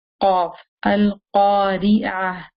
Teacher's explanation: when you say the qaf, remember that it's coming from the deepest part of the tongue